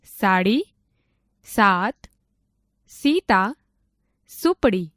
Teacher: સ બોલતી વખતે દાંત, પેઢા અને જીભનું ટેરવું જોડાય ત્યાં અડાડીને બોલાય છે.